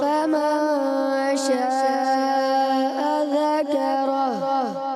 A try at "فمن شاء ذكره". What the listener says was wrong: مد چھوڑ دیتے ہیں آپ. مد کو کھینچنا ہے. مد کا مقصد یہ ہے دراز کرنا. فمن شاء ذکرہ.